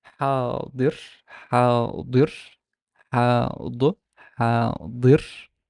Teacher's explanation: notice that the kasra does not show like very significant velarization, because as we said, kasra is already a backed vowel.